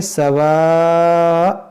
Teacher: دیکھیں، یہاں پر ہم رکیں گے تو اس کو پڑھیں گے سواء، اس دو زبر کو الف سے بدلیں گے